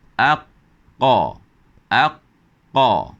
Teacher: lidah ini lebih ke belakang sedikit, tetapi akan bertemu dengan lelangit lembut · Kita boleh rasa lidah kita, pangkal lidah akan menyentuh lelangit lembut, menyekat angin di situ dan menghasilkan bunyi huruf qaf.